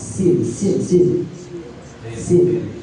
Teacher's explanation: Kalau sin itu di ujung lisan menyentuh ujung gigi atas bagian bawah